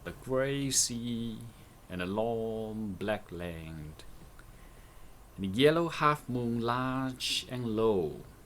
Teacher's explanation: Browning uses diphthongs long vowels back vowels and heavy alliterations here to slow down the speed of our reading aloud